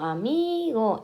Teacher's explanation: amigo en la penúltima, ¿vale? En la penúltima. Con lo cual decimos que es llana